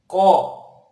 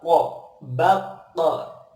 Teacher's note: Nah, bagaimana pengucapan huruf qaf? Yaitu pangkal lidah kita, ini pangkal lidah ditempelkan ke tenggorokan dalam